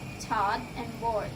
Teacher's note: this vowel is mid, back, and rounded, which means that the tongue height for this vowel is mid, the part involved of the tongue is the back part, and the lips during this tend to be more rounded.